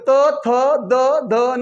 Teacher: हे अक्षर बोलताना दाताला दाताच्या जो जो वरचा भाग आहे त्याला टच करावं लागतं आपली जीभ जाऊन त्याला टच होते उदाहरणार्थ नरु त चा पूर्ण वर्ग त थ द ध न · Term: दंत्य